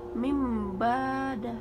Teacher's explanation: Cara membacanya dengan cara menyuarakan huruf nun sukun menjadi mim. Contoh tanwin, contoh nun sukun bertemu dengan ba, dibaca mim bada. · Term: iklab